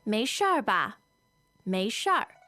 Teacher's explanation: You can add this R sound to the end of 是 and you get 事儿.